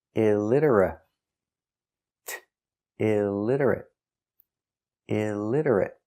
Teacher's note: stop T at the end